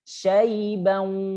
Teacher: menahan tanwin di huruf wawu itu gombi gunah ya. Syaibang masuk ke hidung. Suaranya dimasukkan ke hidung.